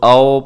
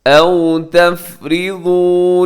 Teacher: اب یہاں کیا ہوتا ہے کہ کچھ لوگ آؤ پڑھ دیتے ہیں، تو اپنے ہونٹ اس میں گول کرنے ہیں تاکہ واو لین اچھے طریقے سے ادا ہو جائے